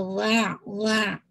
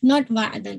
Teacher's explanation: واؤ کے پہلے آپ فتح واضح کیجیے گا اور پھر آئین کو مرج کیجیے گا